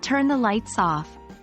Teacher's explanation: when the object of the verb comes in between like turn the lights off the stress often goes on the object lights